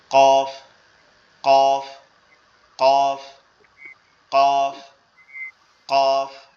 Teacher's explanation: জিহ্বার গোড়াটা হচ্ছে আমাদের ভিতরে, গালের ভিতরে। তো কফটা হচ্ছে জিহ্বার গোড়াটা উপরের তালুর সঙ্গে লাগবে, ঠিক আছে, লেগে উচ্চারণ হবে এভাবে, কফ কফ কফ কফ কফ, এভাবে। · যেটা কফ উচ্চারণ হবে এটা হচ্ছে জিহ্বার গোড়া থেকে। জিহ্বার গোড়াটা হচ্ছে আমাদের ভিতরে, গালের ভিতরে।